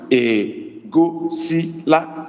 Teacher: Low tone again on O, which is because we put our tone mark on the vowels. Low tone again on O, low tone again on I, low tone again on A.